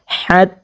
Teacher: এখানে তার উপরে খারা জবর পেয়েছি এক আলিফ পরিমাণ টানিয়া পড়ব হাকে অবশ্যই স্পষ্টভাবে দুই নাম্বার মাখরাজ হতে হলকের মধ্যখানে হতে উচ্চারণ করব